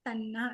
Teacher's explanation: త ప్లస్ నా, త అనే వర్గీయ వ్యంజనానికి నా అనే అనునాసిక పరమైంది, ఆ వర్గం యొక్క అనునాసిక అయిన నా అక్కడ ఆదేశంగా వచ్చేసింది. సో తన్ ప్లస్ నా తన్న అయింది.